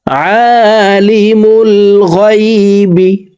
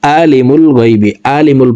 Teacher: আইন হারফকে হালকের মধ্যখান থেকে উচ্চারণ করব আমরা অনেকে আইনের উচ্চারণ সঠিকভাবে পড়তে পারি না হামজার উচ্চারণ করে